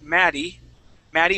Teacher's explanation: the Double T here I turn that to a D sound